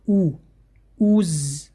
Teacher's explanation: Когда стоит дамма над хамзой, звук «у», мы должны губы делать трубочку и вперед.